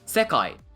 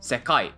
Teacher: The second pattern is the complete reverse. This is called atamadaka, where it starts high and it drops low.